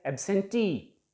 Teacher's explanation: There are 3 vowel sounds, so 3 syllables, and it ends in ee, means e sound, so the stress will be on the last syllable. Absentee, T को हम थोड़ा सा ऊंचा उठाकर बोलेंगे and it will be pronounced as absentee.